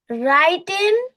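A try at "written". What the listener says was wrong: আচ্ছা ওটা রাইটেন হবে না। রিটেন হবে।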